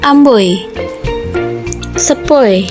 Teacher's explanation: diftong naik menutup maju, oi